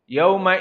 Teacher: yang lainnya dari huruf maka selain dari itu adalah bukan hams maka wau di sini bukan hams maka dia sifatnya jahr Apa itu jahar tidak boleh keluar udara di saat kita mensukunkan